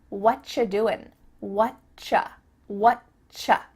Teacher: And actually, we've cut out completely the word r. And the word u just becomes cha.